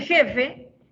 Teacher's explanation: en jefe el primer fonema es es un fricativo velar